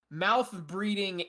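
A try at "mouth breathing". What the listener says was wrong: I like how you said breeding instead of breathing.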